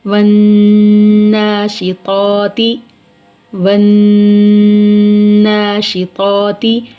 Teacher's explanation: واو نون زبر ون، نون کھڑی زبر ن، ون ن، شین زیر شی، ون ناشی، طا کھڑی زبر طا، ون ناشطا، طا کو پر پڑھیں گے، تا زیر تی، ون ناشطاتی، ون ناشطاتی۔ نون مشدد ہے اور نون مشدد کے اوپر کھڑی زبر ہے، کھڑی زبر کو ایک الف کی مقدار کھینچ کر پڑھیں گے